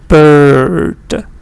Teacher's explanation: It's like a schwa, but it's longer. So you say bird.